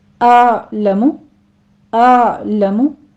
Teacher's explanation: आलमु हमजा की साउंड पहले आएगी, पीछे आइन को हमने स्टॉप करना है, आइन को कलकला नहीं करना, आ नहीं कहना।